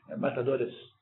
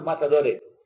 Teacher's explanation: Que, por exemplo, matadores, aquele sibilante no final, e põe matadores. Tira o S fora.